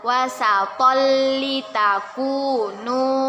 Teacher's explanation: Tanwin bertemu dengan huruf lam. Kita masukkan tetapi dengan tidak berdengung, yaitu idgham bila gunnah.